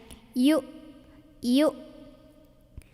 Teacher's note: Jadi bukan dipanjangin yu, ini bukan pemanjang, bukan wawu ya, hamzah. Yu, suara hamzah itu tertahan ya, punya sifat namanya syiddah, jadi tertahan suaranya. Yu, udah nggak ada bunyi lainnya.